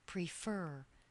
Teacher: Stress is on the second syllable.